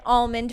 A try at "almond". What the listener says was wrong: I can't handle how you're saying almond right now. Almond. Almond. So I guess you are saying the L. I say almond because I'm not a freak. Almond.